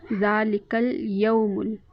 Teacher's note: ज़ाल के ऊपर खड़ी ज़बर एक अलिफ के बराबर हम उसको खींच कर लंबा करेंगे। लाम और काफ के ऊपर हरकत में से सिर्फ ज़बर और ज़ेर हैं तो हम आधे अलिफ के बराबर इनको लंबा करेंगे। ज़ालिकल यौमुल, वाओ साकिन से पहले ज़बर है तो वाउलीन है, नरमी के साथ अदा करेंगे, खींचेंगे नहीं।